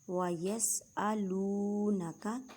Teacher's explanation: واو ساکن سے پہلے پیش ہے، واو مدہ کا قاعدہ کریں مینس کے ایک الف کی مقدار میں کھینچ کر پڑھیں